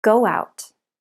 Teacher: go out add a w sound